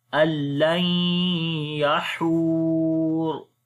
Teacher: ra we read in heavy sound